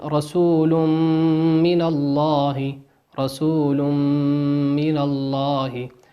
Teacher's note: تنوين أتى بعده حرف الميم، وقلنا الميم من حروف الإدغام بغنة، يغن بمقدار حركتين